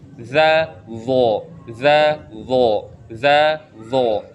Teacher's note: Zal itu dia tidak terangkat pangkal lidahnya atau termasuk huruf tipis, tapi huruf zo dia termasuk huruf tebal. Dia punya sifat isti'la ya.